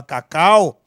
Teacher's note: Então, aqui você fez um decréscimo na tonicidade. Então, aqui nós temos um ditongo decrescente entre o A e o U